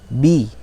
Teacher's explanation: kekeliruan sebagian dari kita membacanya dengan seperti ada hembusan udara, b. Nah, ini keliru. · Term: huruf ba